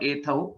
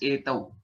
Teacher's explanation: There's no mahaprana. It's not ethau. It is just etau.